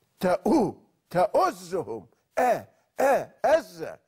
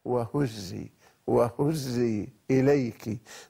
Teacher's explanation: الهاء وهي حرف مهموس في سياق اللين واللطف